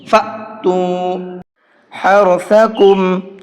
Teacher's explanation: را کو منہ بھر کے پڑھیں گے · حمزہ کے اوپر جب جزم ہوتا ہے تو اس حمزہ کو جھٹکے کے ساتھ میں پڑھتے ہیں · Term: حمزہ ساکن